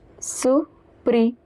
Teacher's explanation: The R in the middle is pronounced as H.